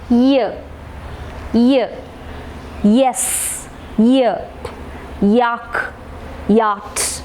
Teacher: You can feel that you are touching your hard palate using the front part of the tongue, and then you produce the sound ear. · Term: palatal sound